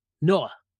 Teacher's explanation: when they say no they put a uh at the end